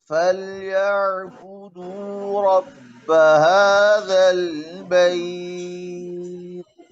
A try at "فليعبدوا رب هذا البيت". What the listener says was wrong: आइन में जरा ख्याल रखें आइन में हिल रही आवाज साकिन हिल रहा है فليعبدوا رب هذا البيت